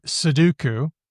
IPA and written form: səduku (Suduku)